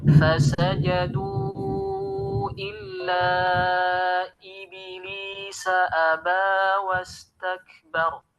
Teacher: huruf ba yang sukun ketika kita berikan sifat qalqalah itu terbawa dengan harokat